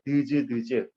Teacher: 즈 소리가 더 혀가 뒤로 들어갈 거예요.